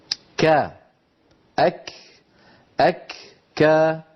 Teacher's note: لا فيه انطباق للصوت بين اللسان والحنك، ولا فيه استعلاء لأعلى الفم